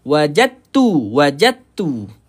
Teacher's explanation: Kalau kita eja dalam jawi dia eh eja dalam jawi wa j a t u wajatu dia akan jadi wajattu dia bukan jadi wajadtu bukan ha bukan jadi wajadtu dia terus pergi kepada ta seolah-olahnya dal ini dah masuk diidghamkan ke dalam huruf ta · Jadi dal ini tak baca dah. Bunyi dia pun tak. Dia terus bunyi ta.